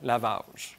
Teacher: Et pour Montréal, on mentionne aussi la prononciation lavage, donc avec la diphtongue et la postériorisation.